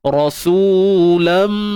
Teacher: Tanwin bertemu lam, idgham. Masukkan tanwin tu ke dalam mim. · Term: Idgham bi gunnah kamil